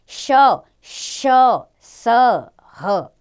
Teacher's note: जिन व्यंजनों को बोलने में मुख से गर्म हवा निकलती है उन्हें ऊष्म व्यंजन कहते हैं